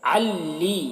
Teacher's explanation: عین کو اس لام مشدد سے ملا کر پڑھیں گے